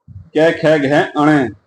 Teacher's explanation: जो है कंठ से बोले जाते हैं, गले के कंठ से निकलते हैं, इसीलिए इन्हें कंठ स्वर कहा जाता है। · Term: कंठ्य वर्ग